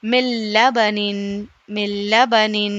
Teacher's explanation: یہاں پر نون بالکل لکھا ہے لیکن پڑھا نہیں جا رہا ہے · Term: ادغام بلا غنہ